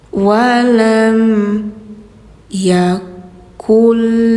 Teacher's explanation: ini n-nya tidak dibaca, langsung ke lam. Ya, karena lam huruf idgham.